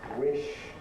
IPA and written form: wɪʃ (wish)